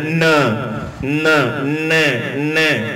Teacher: न में नाक का प्रयोग हो रहा है।